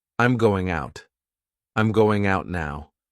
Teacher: We have that flap T because I'm not going to say out.